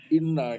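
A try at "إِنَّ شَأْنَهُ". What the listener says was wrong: Panjangin 3 harokat.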